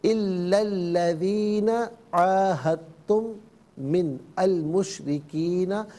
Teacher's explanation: الا میں لام پر جو زبر ہے اسے الذین کے لام کے ساتھ ملائیں گے، درمیان سے حمزہ یعنی الف کو حذف کیا جائے گا